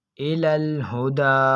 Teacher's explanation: تو اس جگہ پر کھڑا زبر موجود ہے تو ہم اس کھڑا زبر کو ایک الف یعنی 2 حرکات کی مقدار تک کھینچ کر پڑھیں گے